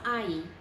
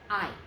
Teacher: just did i okay so it's not ie its I and you barely hear the e at the end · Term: diphthong